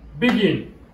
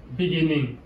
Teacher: Begin, l'accent est sur le second.